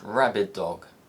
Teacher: the first sound isn't released giving the impression that there is just one sound